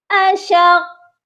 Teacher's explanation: قاف پر پہلے ہم نے سختی سے آ کر رکنا ہے، بعد میں اس آواز کو ہلا دینا ہے